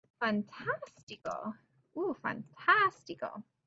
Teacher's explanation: Stress is on the third from last syllable, and we're going to get a tilde there.